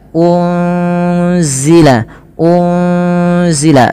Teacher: Pada lafal unzila ini ada nun sukun bertemu dengan huruf zai. Apabila ada nun sukun bertemu dengan huruf zai ini cara membacanya adalah nunnya disamarkan kepada huruf zai ya. Unzila unzila sembari ditahan dengan dua harakat bunyinya. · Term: ikhfa hakiki